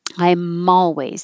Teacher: The M will connect to the A, so it'll sound like malways.